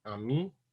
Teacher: politics of language for example this word here amin is mother these two vowels become nasal because of the contact with the m they're not underlyingly the the first one is not underlyingly nasalized